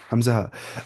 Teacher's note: हमजा हा पढ़ना है अक्सा हलक से, farthest portion of throat from mouth